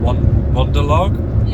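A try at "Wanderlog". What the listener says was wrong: not Wonder, as in like you're having a wander around.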